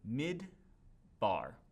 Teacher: that cheva is never pronounced it's there because it's showing that the first syllable is closed before moving on to the second syllable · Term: cheva is silent